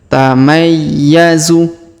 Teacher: kita panjangkan dua harakat karena di depannya terdapat Alif takadu tamayyazu perhatikan huruf ya berharakat tasdid maka kita tahan dan kita tekan pada huruf ya · huruf ya berharokat tasdid, maka kita tahan dan kita tekan pada huruf ya